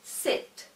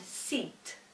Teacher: One is a short I sound and the other is a slightly longer E sound.